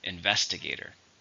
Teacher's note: It has 5 syllables, stress in the second.